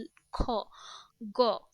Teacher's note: জিহবামী হচ্ছে জীভের পেছনের অংশ। এবার এবার জীভের পেছনের অংশ উঁচু হয়ে আল জীবের মূলের কাছাকাছি যে নরম তালু সেটা স্পর্শ করছে। খ গ দেখ এটা উচ্চারণ করলে তুমি বুঝতে পিছনের দেখ জিওবার যে গোড়া অংশ একদম পিছে ওই অংশগুলোকে টাচ করছে। · জিভের পেছনের অংশ উঁচু হয়ে আল জিভের মূলের কাছাকাছি যে নরম তালু সেটা স্পর্শ করছে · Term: জিহ্বামূলীয় ধ্বনি